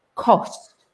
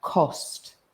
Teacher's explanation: It's the O sound, cost. You see my lips go round.